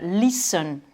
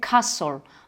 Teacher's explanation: vous avez là un T qui est muet